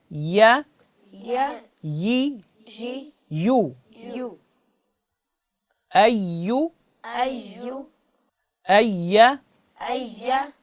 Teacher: اس یا کو زبان کے درمیان والے حصے اور اس کے مقابل کے تعلق سے ادا کرنا ہے۔